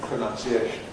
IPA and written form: prəˌnʌnsiˈeɪʃn (pronunciation)